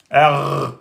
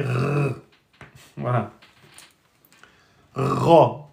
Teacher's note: La base de la langue, s'appuie sur le palais mou.